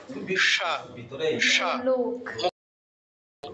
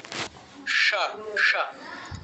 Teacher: মূর্ধাতে মানে আরেকটু জিহ্বাটা পেছনে গিয়ে মূর্ধার থেকে উচ্চারিত হয় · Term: মূর্ধন্য স